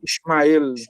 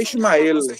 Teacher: É como se fosse uma palavra oxítona.